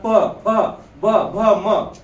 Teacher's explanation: प फ ब भ म ओठांची सहाय्यता घ्यावी लागते तुम्ही जर ओठांची सहाय्यता घेतली नाही तर काय होईल पूर्ण होईल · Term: ओष्ठी व्यंजन